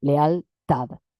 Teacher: No tiene diptongo porque la e y la a son vocales abiertas. Sin embargo, muchas veces leemos leal como si fuera un diptongo. Lealtad es ahí se produce una sinéresis. · juntamos vocales que no forman diptongo, pero que las leemos como si fueran un diptongo